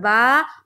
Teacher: खड़ा ज़बर बराबर होता है अलिफ मद्दा के और खड़ा ज़बर को एक अलिफ के बराबर खींचेंगे